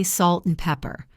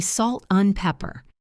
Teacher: usually we just say un, or even just the N sound